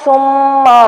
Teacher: میم پر غنہ کیا جائے گا کیونکہ میم مشدد ہے. میم کو آگے را کے ساتھ جوڑیں گے اور را کو پر کریں گے.